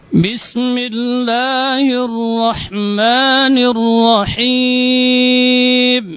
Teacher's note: merapatnya kedua bibir ketika mengucapkan huruf ba itu lebih kuat dibandingkan huruf Mim